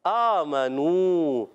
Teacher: नून की ज़बर को खींचना नहीं है, याद रखना है। आमनू, आ को खींचना है, मीम की ज़बर को नहीं खींचना, नू को खींचना है